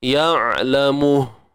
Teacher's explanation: berhenti pada ha tu dengan bunyi yang sharp lah. Tak perlu panjang. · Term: Waqaf